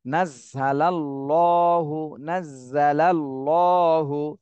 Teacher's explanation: আল্লাহ শব্দ ডানে জবর আসছে এজন্য আল্লাহ শব্দকে মোটা করে পড়তে হবে